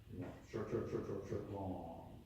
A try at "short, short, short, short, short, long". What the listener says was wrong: just a moment, what you did was short, short, short, short, short, long. I did, short, short, short, ta ta ta. I did, ta ta ta ta ta.